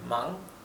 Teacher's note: La G final, cuando tenemos NG, esa G final es casi imperceptible. Se pronuncia apenas como el comienzo con el fondo de la garganta.